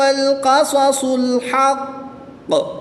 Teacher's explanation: قاف، صاد یہ حروف مستعلیہ میں سے ہیں، ان کو پر پڑھنا ہے، موٹا پڑھنا ہے